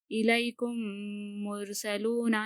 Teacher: यहाँ पर हम गुन्ना करेंगे क्योंकि मीम के बाद मीम आए तो पहली मीम को दूसरी मीम से मिलाकर गुन्ना करना है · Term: इदगाम शफवी